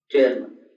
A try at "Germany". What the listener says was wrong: No. This is not gay. This is G. Germany. Germany. Germany.